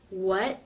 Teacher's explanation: the tongue moves into position and that is the stop the air flow is cut off pressure builds up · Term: stop consonant